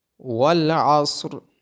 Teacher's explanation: عین کی آواز گلے کے درمیان سے آئے گی، صاد اور را کو موٹا پڑا جائے گا۔ · صاد اور را کو موٹا پڑا جائے گا۔ ان الانسان، نون مشدد ہونے کی وجہ سے نون پہ غنہ ہوگا، اور نون ساکن کے بعد حروف اخفا میں سے سین ہونے کی وجہ سے نون پہ اخفا ہوگا۔